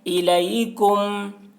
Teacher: الیکم میم کو میم سے ملا کر غنہ کے ساتھ پڑھیں گے. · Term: ادغام شفوی